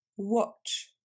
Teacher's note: Vous vous débarrassez du son A et vous allez le remplacer par le son O de of. Watch. Of.